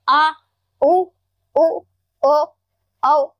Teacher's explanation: ये हमारा पश्च स्वर है यानी जीभ के पीछे का भाग है